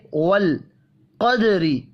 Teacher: دال ساکن ہے، قلقلہ کریں گے